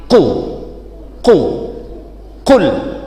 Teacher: Jadi lidah yang pangkal lidah sana nemplek ke langit-langit. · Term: qaf